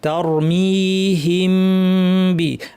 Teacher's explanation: তাটা পাতলা হবে রটা ভারী হবে